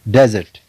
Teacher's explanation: In this example, desert, you can find the accent mark on the first syllable, desert.